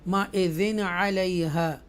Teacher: مَئِذٍ عَلَيْهَا, یہ یا لین ہے اور یہاں اظہار ہوگا کیونکہ تنوین کے بعد عین حروف حلقیہ میں سے ہے, تھروٹل لیڈر میں سے, اس لیے کلیئر پڑھیں گے